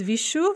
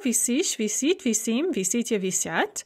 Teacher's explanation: note the consonant mutation in the first person singular the yaw form but not in the other forms